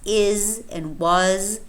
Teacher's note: is a voiced alveolar fricative